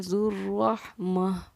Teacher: وَرَبُّكَ الْغَنِيُّ ذُو الرَّحْمَةِ، کیونکہ یہاں گولتا ہے اور وقف مطلق کی علامت ہے، گولتا پر جب ہم وقف کرتے ہیں تو وہ ہائے ساکنہ ہا بن جاتی ہے، اسی لیے ذو الرحمتی کو ہم نے پڑھا ہے ذو الرحمہ۔